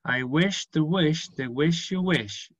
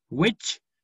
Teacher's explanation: Todos estos son sh. Entonces siempre van muy arrastrados.